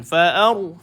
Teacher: Fa'aru, fa senyum, hamzah senyum, ra yang ditebalkan.